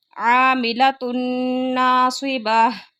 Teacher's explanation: تنوین کے بعد نون آ گیا، یہاں پہ غنے کے ساتھ ادغام ہو رہا ہے۔